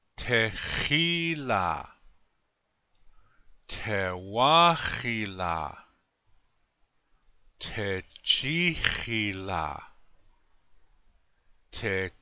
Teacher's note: You hear how I always keep that accent on the second syllable.